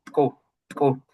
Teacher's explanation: But I have the recording of a speaker that sounds pretty much like a click, something like tku, tku. And it seems to me that what he does is further the coronal part in front of the velar part, and this provokes a click